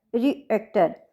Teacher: रिएक्टर है तो यहाँ सेकंड सिलेबल के ऊपर हमारा स्ट्रेस है, रिएक्टर। और इनमें ये जो डॉट लगे हुए हैं ना बेटा सभी में, ये सारे सिलेबल बनाए गए हैं इनका।